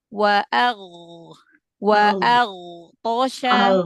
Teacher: Huruf ghain, huruf istila'la ya. Berarti angkat pangkal lidahnya. Iya, angkat pangkal lidahnya terus dialirkan.